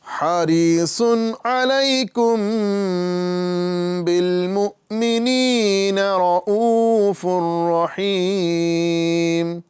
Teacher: واو مدہ اور تنوین کے بعد میں را آ رہا ہے، یہاں پہ ادغام کریں گے بغیر گنہ کے